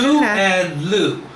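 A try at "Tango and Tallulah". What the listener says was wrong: Tangu and Tallulah. That was too many syllables. Tangu.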